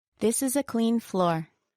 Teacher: she said it with a downward intonation on floor